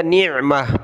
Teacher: یہاں سانس ٹوٹا تو گولتا کو میں نے ہا بنا دیا